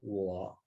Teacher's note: we see to it that this character its tone is low very low it's third tone · Look at the tone mark. It's like V, very low. It's like a valley. · its tone is low, very low. It's third tone. So when you pronounce it, it's wo.